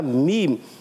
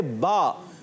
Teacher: मीम में होंठों का खुश्क हिस्सा यूज़ होता है और बा में होंठों का तर हिस्सा यूज़ होता है